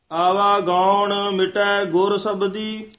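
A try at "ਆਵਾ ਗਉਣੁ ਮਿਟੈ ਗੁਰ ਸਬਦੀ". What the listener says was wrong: ਇਸੇ ਤਰ੍ਹਾਂ ਹੀ ਮਿਟੈ ਪਦ ਤੇ ਠਮਕ ਲਾਉਣੀ ਹੈ। ਮਿਟੈ ਗੁਰ ਨਹੀਂ ਕਹਿਣਾ।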